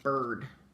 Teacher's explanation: So here, just like with first, the I you don't really hear. You're just hearing that R. Bird. Okay? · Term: R-controlled vowel